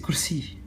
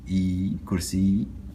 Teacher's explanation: c'est une imposition du son I à travers le ya, qui fait du dernier son une voyelle longue, I, kursi. Le mot est comme ça.